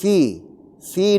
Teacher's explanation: penyebutan huruf fa yang benar adalah ada keluar napas fi bukan pi